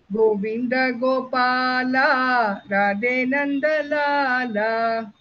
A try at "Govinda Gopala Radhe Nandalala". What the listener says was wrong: Gopala, you have to prolong a little bit.